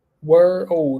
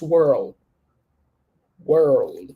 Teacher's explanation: You're gonna say were old, and you connect, and it becomes world